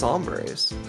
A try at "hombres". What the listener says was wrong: You gotta pronounce the H, son.